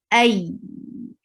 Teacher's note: Hamza is a very strong letter. It is pronounced from the last part of your throat, and then you attach it with Ya, Ay, and it will get Nabar.